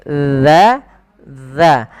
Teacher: sifat huruf za itu ada sifat yang namanya sifat rikhwah, yaitu dia mengalirnya suara.